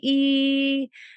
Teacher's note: So if you say E, you can feel the tongue is really high in the mouth